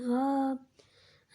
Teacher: ہا کو 1 الف کے بقدر کھینچ کر پڑھیں گے